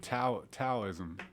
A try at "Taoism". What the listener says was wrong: T. No, it's pronounced with a D, but it's spelled with a T.